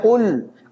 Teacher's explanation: Kalau antum mengucapkan lamnya dalam kondisi monyong, namanya ismam ini. Nyampur antara dhammah dengan sukun.